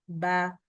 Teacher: മീമിനേക്കാളും കൂടുതലായിട്ടാണ് ബന് നമ്മൾ ആ ഒരു പ്രഷർ വരുന്നത് ചുണ്ടിൽ